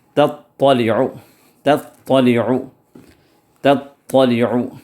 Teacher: التی تطلع، اب تطلع کے اندر تا بھی ہے طا بھی ہے، دونوں ہیں، تا کو باریک پڑھنا ہے اور طا کو موٹا پڑھنا ہے